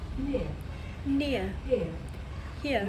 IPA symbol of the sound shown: ɪə